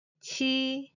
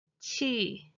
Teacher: the original pronunciation of the 戚 character is ㄑ一 but it is customarily pronounced as ㄑ一 ˋ